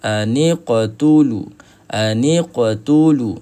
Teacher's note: kita kena tebalkan bunyikan aa huruf qaf ini ke arah baris atas. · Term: isti'la